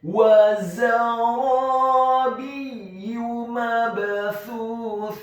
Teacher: Huruf ba-nya dibaca tipis kasrah 1 harokat. Dan huruf ya-nya dibaca tipis ditasydidkan ditekankan dhammah cukup 1 harokat saja